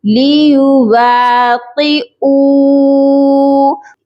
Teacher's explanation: واو ساکن ہے اور واو ساکن سے پہلے پیش ہے، اسی لیے یہ واو واو مدہ کہلائے گا، اور حمزہ کو ہم جب واو مدہ کے ساتھ ملا کر پڑھیں گے تو ایک الف کے برابر اس کو بھی کھینچیں گے، لیواقعوا۔ اس کے آگے دیکھ لیجئے کہ الف ہے جو کہ خالی ہے، اس الف کو ہم نہیں پڑھیں گے کیونکہ یہ الف مدہ نہیں ہے۔